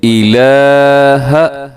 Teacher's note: یہ مد کا سائن اس کے اوپر موجود بھی ہے، لا، اور یہ مد اسے کہا جاتا ہے مد منفصل، یعنی مد جائز ہے، اگر آپ نہ بھی کریں لمبا زیادہ تو کوئی حرج کی بات نہیں ہے۔ الہ، اب یہاں پہ لام کے اوپر کھڑا زبر ہے تو اس کو آپ نے کھینچنا ہے، لمبا کر کے پڑھنا ہے۔ الہ، اللہ کے ساتھ الف ہے تو الف کی وجہ سے ہم اس کو تھوڑا سا لمبا کر کے پڑھیں گے۔